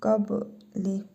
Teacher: Bu bə hərfidir. Üzərində cəzm var. Qalqalə edərək tələffüz edirik.